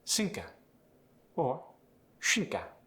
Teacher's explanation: the TH was replaced by an S or an SH.